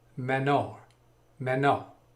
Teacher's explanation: there's an r at the end that's just very briefly pronounced but the second syllable i think is has the emphasis so